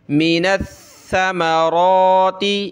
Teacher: ثا پہ جو ہے زبان نکالتے ہیں تھوڑی سی ، یعنی ثا اس طرح پڑھا جاتا ہے، مِنَ الثَّمَرَاتِ رِزْقًا